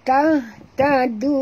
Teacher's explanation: Okay, dal di sini jangan tebalkan dia. Lunak, perempuan. Dal ni sentilkan di hujung lidah.